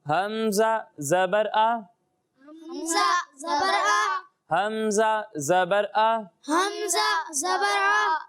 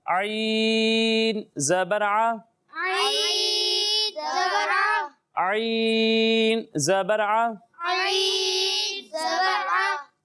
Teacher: جی، حمزہ کو حلق کے نیچے والے حصے سے اور عین کو حلق کے درمیان والے حصے سے پڑھیں گے، ٹھیک ہے؟